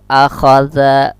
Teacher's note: za ini ujung lidah dengan ujung gigi yang di atas, dan dia pun juga termasuk huruf rakhawah berlalu.